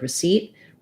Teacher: Receipt has second syllable stress